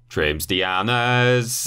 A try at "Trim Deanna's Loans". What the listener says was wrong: No, you've added an S. You've added an S. There's no S on trims. It's trim. Just trim.